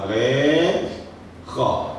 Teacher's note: Itu sama juga tempatnya. Ghain dengan kha dia di atas, dekat dengan anak lidah. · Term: makhraj halqiyah